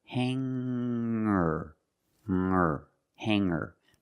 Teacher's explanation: When I change these words with ER, I don't pronounce the G sound. It's just the nasal linked together